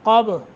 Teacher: قب قاف کو موٹا، با پہ قلقلہ